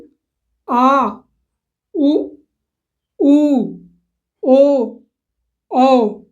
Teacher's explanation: पश्च स्वर। जीभ के पिछले हिस्से से इनका उच्चारण किया जाता है।